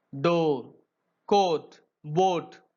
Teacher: the back of the tongue is raised towards the soft palate to the height between half open and half closed. இந்த சவுண்ட produce பண்ணும்போது டங்கு வந்து எதை நோக்கி ரைஸ் ஆகுதுங்க soft பேலட்டோட நோக்கி ரைஸ் ஆகுது.